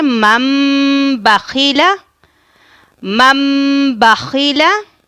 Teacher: مثال کے طور پر ابھی آپ یہاں پر دیکھیں مم بخیلہ، ابھی آپ یہاں پر دیکھیں کہ نون ساکن کے اوپر ایک چھوٹی سی میم ہے، تو آپ نے نون ساکن کی جگہ پر میم کی آواز نکالنی ہے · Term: اقلاب